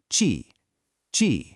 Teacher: That sharp, it's a really sudden, powerful release of air.